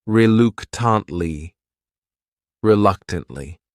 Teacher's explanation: This word has four syllables and the stress is on that second syllable. That third syllable also has that schwah reluctantly.